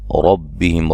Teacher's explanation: عند ربہم، نون ساکن کا اخفا ہے، ربہم را کو موٹا ادا کریں گے